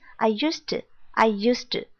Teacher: Pay attention to the past tense right here, ed sound. But actually when you speak, you don't really pronounce t sound. So it becomes, I used to.